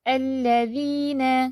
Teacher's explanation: اب ادھر لام پہ تشدید ہے، شد ہے، تو اس کو آپ نے زیادہ ہی ہولڈ نہیں کر دینا